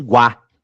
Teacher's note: Em guá eu tenho uma vogal que é o a e uma semivogal que é o u. Esse u aqui não é vogal, gente.